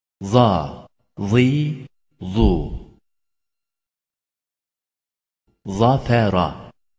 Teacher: Z, dilin ucunun çok az ilerisiyle üst ön dişlerin arkasından çıkarılır. Daima kalın okunur.